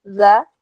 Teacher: Za ini termasuk huruf tipis. Jadi ketika berharakat fathah bunyinya bukan do tapi za ya.